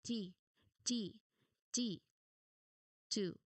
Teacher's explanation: This sound is made by tapping your tongue tip quickly behind your front teeth. So try to push the air out fast and hard but do not use your voice. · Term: letter T